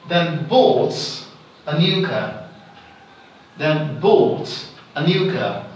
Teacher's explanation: I am emphasizing the word bought. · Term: emphatic stress